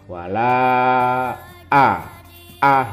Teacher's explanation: Mad Jaiz munfasil dibaca 5/6 ketukan